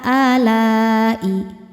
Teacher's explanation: Mad thabi'inya alif didahului fathah, hamzahnya i, sama-sama ada pada kata alai. Maka lamnya panjang, boleh empat, boleh lima harakat.